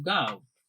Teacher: તો અહીંયા વ ની જગ્યાએ ઉ બોલાણો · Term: અર્ધસ્વર